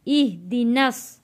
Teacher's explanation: नून जुड़ेगा स्वाद के साथ, क्योंकि स्वाद के ऊपर तशदीद है। यहाँ एह नहीं पढ़ना, इह पढ़ना है।